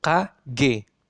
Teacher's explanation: sama-sama dihambat kemudian dikeluarkan. Tidak ada desisan di sini. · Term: dorsovelar